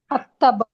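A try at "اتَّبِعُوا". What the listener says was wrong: ഇല്ല, ആ വരില്ല. ഹംസത്തുൽ വസ്ൽ വന്നിരിക്കുന്നത് ഫേലുകളിലാണ്. ഇഹ്ദിന ഫേലാണ്, ഇത്തബിഉ ഫേലാണ്, ഇസ്തിക്ബാറ ഫേലാണ്, ഇസ്ബിർ ഫേലാണ്, ഇഅ്മലു ഫേലാണ്. ഈ ഫേലുകളിലൊക്കെ മൂന്നാമത്തെ അക്ഷരം ഒന്നല്ലെങ്കിൽ ഫതഹാണ് അല്ലെങ്കിൽ കസറാണ്.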